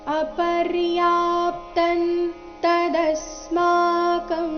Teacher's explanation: ಇಲ್ಲಿ ದ ಮೇಲೆ ಆಘಾತ ಬರಬೇಕು ಮುಂದೆ ಸ್ಮ ಎಂಬ ಸಂಯುಕ್ತಕ್ಷರ ಬಂದ ಕಾರಣ